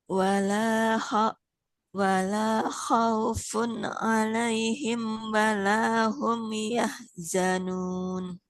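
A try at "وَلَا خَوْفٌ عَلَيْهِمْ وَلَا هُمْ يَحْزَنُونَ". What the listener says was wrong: Oh, oke, alhamdulillah. Barakallahu Ibu.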